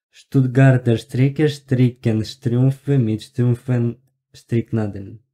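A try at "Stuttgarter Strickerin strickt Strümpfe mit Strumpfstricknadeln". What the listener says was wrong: Ну, нормально, хорошо, молодец.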